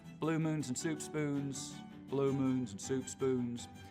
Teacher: with very fronted Goose vowels blue moons and soup spoons but they'll get less and less fronted the further west I go